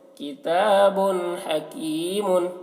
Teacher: یہاں پر با کے اوپر 2 پیش کی تنوین ہے، تنوین کے بعد حروف حلقی میں سے ہا آ رہا ہے، تو یہاں پر بھی تنوین کو ظاہر کر کے پڑھیں گے، یہاں پر غنہ اور اخفا نہیں کرنا ہے، یعنی کتاب ایسے نہیں کرنا ہے، اور نہ ہی کتاب ایسے کرنا ہے، بلکہ کتاب حکیم ایسے، کتاب حکیم۔